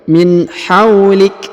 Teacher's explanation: Huruf waw dibaca 2 harokat ya, atau diayun sekali